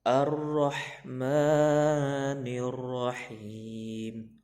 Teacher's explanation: Ro-nya tebal karena berbaris fathah.